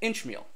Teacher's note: the word Inchmeal, you would emphasize the first syllable, Inchmeal. So by Inchmeal a disease, and this which is stressed, might actually be a medial stress.